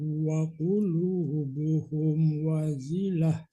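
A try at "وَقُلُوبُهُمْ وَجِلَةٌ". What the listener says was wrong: Hati-hati bukan zai tapi wajilah. Wajilah gitu.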